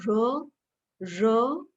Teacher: when you say raw then there is no friction the voice is just coming out raw nothing is stopping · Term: frictionless continuant